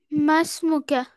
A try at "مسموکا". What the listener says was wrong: Attach ہے وہ الف ہے، اس کو حمزہ نہیں کہیں گے. وہ کیا ہے؟ الف ہے.